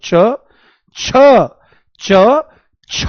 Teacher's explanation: जैसे ही आप बोलोगे छ, तो आप देखो एक जोर सा पड़ता है, दम सा लगाना पड़ता है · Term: महाप्राण